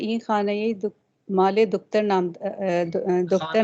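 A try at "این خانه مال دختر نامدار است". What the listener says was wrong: कसरा नहीं है यहाँ पे। दोबारा कसरा लगाने की जरूरत नहीं है, वो कसरा माले पे चला गया।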